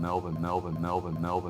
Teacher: in Australian English you've also got L vocalization which is basically before a consonant or at the end of a word the letter L gets pronounced more like the letter W